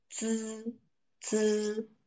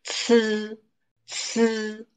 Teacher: For ci, the air struggles out very hard.